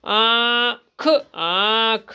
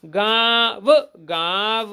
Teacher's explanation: इस चंद की बिंदी को अनुनासिक कहा जाता है और जब कभी व्यंजन के साथ इसको लगाया जाता है तो व्यंजन की आवाज़ हल्की मुंह और नाक से दोनों मिलाकर निकालते हैं